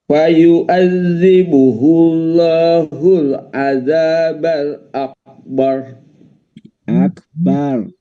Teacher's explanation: Akbar tebal akbar. Rnya didahului oleh fathah.